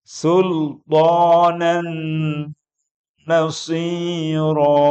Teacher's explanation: Sultanan nasiro jangan lupa ditahan, didengungkan.